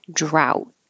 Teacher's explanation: Hold that final T, and the vowel is ow.